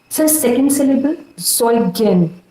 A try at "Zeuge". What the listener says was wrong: So, Zeuge. Also das liegt auf der ersten Silbe.